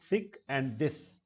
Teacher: Active articulator is द tip of द tongue. Passive articulator upper front teeth. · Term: डेंटल साउंड्स